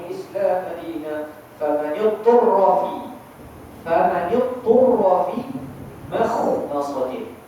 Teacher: Dia tak boleh baca dengan makhmasatin sebab huruf kha dia adalah bersifat dengan isti'la.